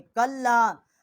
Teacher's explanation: کاف کو لام کے ساتھ مشدد کیا ہے اور یہاں چھوٹی مد ہے، 3 الف جتنا آواز بلند کیا ہے